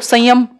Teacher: जहां सिर्फ ये अंक की बिंदी होती है वहां वो उसको हम अनुस्वार कह देते हैं, क्योंकि सिर्फ नाक का इस्तेमाल हो रहा है